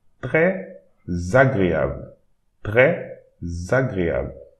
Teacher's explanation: So we have the S here and a vowel starting the next word. So we need to pronounce it Z. It will create an imaginary Z.